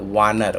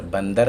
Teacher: संस्कृत शब्दों में प्रयोग होने वाला व वर्ण तद्भव में ब वर्ण का रूप ले लेता है।